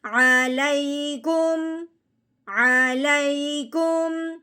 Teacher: یہاں پہ ہم نے میم ساکن پہ غنہ بالکل نہیں کرنا. میم ساکن کے بعد با ہو تو ہم نے غنہ کرنا ہے، ورنہ غنہ نہیں کرنا.